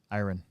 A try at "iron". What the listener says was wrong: It sounds like like you're saying I run.